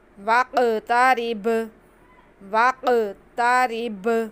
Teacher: काफ भी साकिन, बा भी साकिन, दोनों पे कलकला होगा।